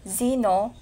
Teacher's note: Z as a voice alveolar fricative